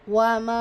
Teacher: மத்தை தொடர்ந்து அடுத்த வார்த்தையுடைய தொடக்கத்துல ஹம்ஸா வருது மத்துன் முன்பசில் நான்கு அல்லது ஐந்து ஹரக்கத் நீட்டலாம் நம்மளுடைய ஸ்டடி ப்ரொசீஜர் படி நம்ம நான்கு ஹரக்கத் நீட்டுறதே பெஸ்ட்ன்னு சொல்லி